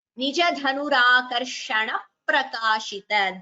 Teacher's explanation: Dvitvam again there. Before P, before Prakashita, we hear a double P.